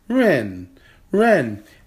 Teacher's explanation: Ren, that is a fourth tone character. That's a falling tone